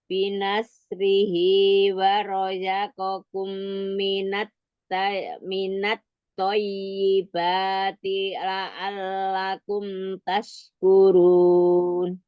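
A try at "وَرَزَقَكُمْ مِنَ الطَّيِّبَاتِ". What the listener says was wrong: Masih sama razanya itu masih antara ke iya ya. Warazaqakum minat thayyibat. Sempurnakan setiap gunnahnya. Tonya tasdid, ya tasdidnya naber. Ya, roza, za.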